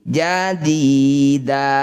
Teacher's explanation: Disebut bacaan mat iwat. Kita ganti fathah tanwinnya jadi fathah panjang. Jadidan, saat berhenti jadida, sama dengan yang tadi.